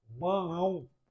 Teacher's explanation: Nesse caso, eu tenho um ditongo nasal. Por quê? Porque eu fechando o nariz, eu não consigo pronunciar 100%.